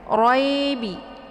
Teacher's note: ini ada hukum bacaan ra karena RO nya berharakat fathah maka roh ini dibaca tafkhim ya tebal ujung lidahnya terangkat ke langit ya kemudian di sini ada Ya Sukun sebelumnya berharakat fathah ya